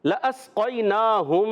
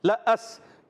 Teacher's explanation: لام کا زبر جو ہے یہ نہیں کھینچیں گے. لَأَس یہ لام تاکید ہوتا ہے، یہ کھینچنا نہیں ہوتا.